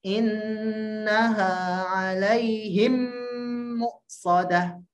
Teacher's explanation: idgham syafawi memang harus ditutup. Bibirnya diberikan tekanan.